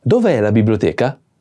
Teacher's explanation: Is a question, so the intonation is increasing.